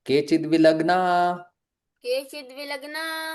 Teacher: यहां पर संधि हो रही है और विसर्ग का भी लोप हो रहा है।